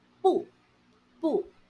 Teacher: 不 is pronounced in the fourth tone when used alone.